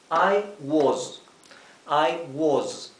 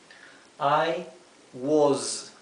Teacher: la s que sea una s vibrada